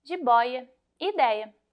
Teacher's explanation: Terceira regra, não se usa mais acento em ditongos ei e oi que estão em palavras paroxítonas, ou seja, que têm a penúltima sílaba mais forte